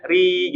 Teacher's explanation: kalau kasrah di ee tipiskan ditarik rahangnya